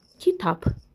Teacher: Tələffüzdə B, P kimi tələffüz olunacaq.